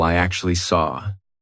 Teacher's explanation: The reason why we're doing an R here is because we have the OR sound of saw and then an A. · So, actually, this sound feels like it ends in an R. The word saw kind of sounds like it ends in an R. And that is why we are using the R sound. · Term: intrusive R, linking R